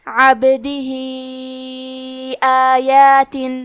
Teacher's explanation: آخری میں ہاں پہ مد کا علامہ ہے اور ہاں کے نیچے کھڑی زیر ہے. یہاں حکم ہے مد صلہ کبریٰ تو ہم اپنی آواز 2 سے 4 مد کے برابر لمبی کریں گے